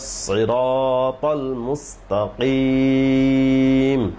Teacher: সিরাত সদ মোটা করতে হবে